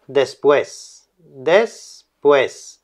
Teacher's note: se juntan esas dos vocales como es una cerrada y una abierta pues forman un diptongo